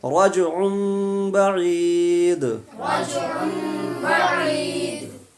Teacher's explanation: تنوین کے بعد حرف با آ گیا، اس لیے رجعن سے رجعم ہو گیا۔ جو تنوین میں عین دو پیش ان کی آواز نکلی تھی، اب اسی کو تنوین کو میم سے بدل کے پڑھ دیں گے۔